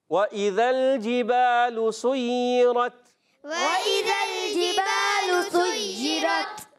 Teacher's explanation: ذال کو ملانا ہے لام سے، لام کو ہلانا نہیں ہے کیونکہ حرف لام ساکن ہے